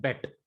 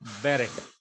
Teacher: Segol gives a short E sound in bet. Sere gives long E sound in beret. And sereyod, it gives further long E sound in beret.